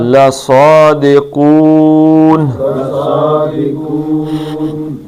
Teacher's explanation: لَصَادِقُون کو 2 حرکتیں تھیں لیکن عارضی طور پہ نون ساکن ہوا تو اس کو 5 حرکتیں کھینچ لیں گے